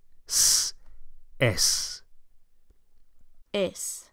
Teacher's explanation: with a nice s on the end. Not z, but s